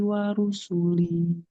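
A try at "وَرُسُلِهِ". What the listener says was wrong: Wa rusulih. Tidak wa rusulih. Nggak boleh panjang.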